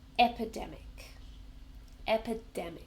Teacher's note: So epidemic has four syllables. Epidemic. And we stress the third syllable. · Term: stress the 3rd syllable